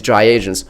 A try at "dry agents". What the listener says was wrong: You gotta be careful when you say that. You sound like you're saying dry Asians.